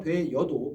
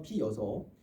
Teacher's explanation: 자, 그 다음에 왜나 이, 돼 어도가 돼 여도, 피 여서가 피 어서가 피 여서, 왜나 이와 같은 모음으로 끝나는 형태소죠. 어와 같은 모음으로 시작하는 형태소가 결합할 때 반모음이 첨가되는 반모음 첨가가 발생했습니다